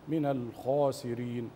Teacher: اظهار اللام القمريه بلا قلقله او شبه حركه فيها وعدم تطنين النون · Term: اللام القمرية